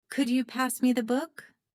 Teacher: The stressed words are pass and book. The words could you and me the are less stressed. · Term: rhythm